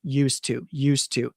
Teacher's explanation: So you don't really hear the t · We don't always hear the D a lot because there's a T after it